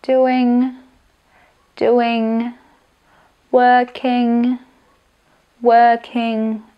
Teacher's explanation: Musíte to v kvázi celé položiť do nosa